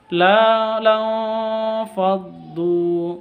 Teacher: nun sukun bertemu dengan Fa samar didengungkan ikhfa Hakiki